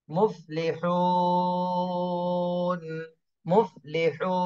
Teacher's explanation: হা ওয়াও পেশ হু, মুফলিহু, নুন জবর না, মুফলিহুনা। নুনে সাকিন দিতে হবে, আর হু এই মাদের হরফে 3 আলিফ টান দিতে হবে।